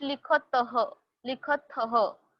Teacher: It is th and visarga, not only th.